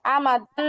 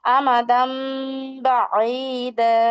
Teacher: তারপরে দেখেন আমাদাম বাঈদা, এই যে আমাদাম, এখানে মূলত আমাদান হওয়ার কথা ছিল, তাই না? কিন্তু যেহেতু এখানে বা আছে, তাহলে মিম দ্বারা পরিবর্তন করে পড়তে হবে